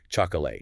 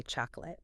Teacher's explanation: We often just get lazy and turn the vowel into a schwa.